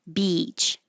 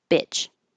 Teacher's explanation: Another thing you can do to help distinguish them is make the duration a little longer. So for beach and sheet, those you can stretch longer. And bitch and shit, you can make shorter.